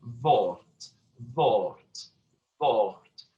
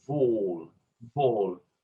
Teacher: And so an O and spelling of an O plus two or more consonants, Wort, Wort, Wort, compared to Wohl, Wohl, Wort. And you hear that that is shorter and it's more open compared to the longer close O sound